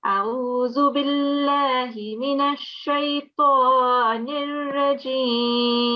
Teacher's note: we don't have a nasal sound here between the ta and the noon